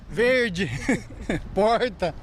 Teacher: O R é grande demais. Este é o R retroflexo, o popular R caipira.